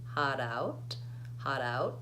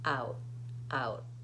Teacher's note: that final T gets stopped I don't let the air come out it's not aspirated